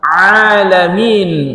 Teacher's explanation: Ain dari tengah tenggorokan